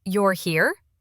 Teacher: with a rising tone. It sounded surprised and sweet, like, "Oh, hey!" When a different customer said the same words with a flat, falling tone, it felt like, "Why are you here?" Same words, totally different feeling.